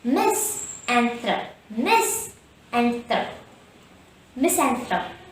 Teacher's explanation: And the first syllable mis is stressed.